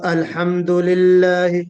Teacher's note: اگر نرمی ہوگی رخاوت تو الحمد للہ، انتہائی نرم آواز سے ہم لام نکالیں گے